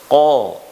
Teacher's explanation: kalau kita pencet hidung kita pada waktu melafalkan qa, itu nanti tidak ada masuk ke pangkal rongga hidung. Qa masih tetap. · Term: huruf qaf